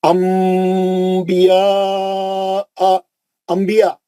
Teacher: دیکھیے نون ساکن کے بعد با آ گیا. اب ہم نون کو میم سے پڑھیں گے. انبیاء, انبیاء میم سے بولتے ہیں ہم, انبیاء نہیں بولتے.